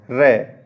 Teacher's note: उच्चारण करते समय जो जीभ है वो गोल हो जाती है